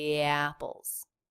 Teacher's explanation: connecting them with a letter Y which is written in IPA with the J symbol